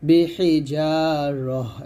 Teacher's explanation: ওয়াকফের অবস্থায় তাটা সাকিন করলে তাটা হাসাকিন হয়ে যাবে।